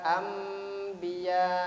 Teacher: non mati berjumpa dengan ba dibaca iklab, ditandai dengan mim kecil, maka nonnya dimasukkan ke dalam baknya.